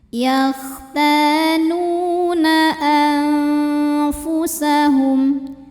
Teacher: Karena ada nun sukun yang menghadapi huruf fa, maka nunnya dibunyikan samar-samar. Jadi siap-siap ke makhraj huruf depannya, yaitu ke makhraj huruf fa. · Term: ikhfa